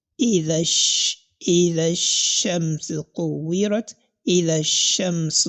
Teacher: The first letter, which happens to be the letter of elongation, then we have the letter shin, which is going to be active, because letter lam in this place, lam ta'rif here in this place, is totally silent because you are going to assimilate it. And the letter that is separating both these two letters is what is termed as hamzatul wasl.